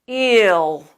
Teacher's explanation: Whenever you have any other vowel before that dark L, eel, ill, all, it's going to change into that ol sound as you draw that sound further into the back of your throat.